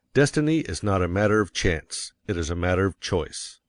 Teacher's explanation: And you will put some emphasis on not, else your hearers may think you are affirming that destiny is a matter of chance. By all means, you must emphasize chance, for it is one of the two big ideas in the statement. Another reason why chance takes emphasis is that it is contrasted with choice in the next sentence.